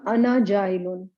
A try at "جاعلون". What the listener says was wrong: دیکھیں عین کو صحیح نکالیں, ورنہ لگتا ہے جاعلن, وہ جاہلن لگنے لگے گا ورنہ, ہے نا.